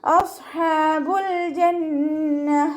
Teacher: നാവിൻ്റെ മുഴുവൻ ഭാഗങ്ങളും മുകളിലേക്ക് ഉയർത്തിയിട്ട് തഫീം ചെയ്യുക കേട്ടോ.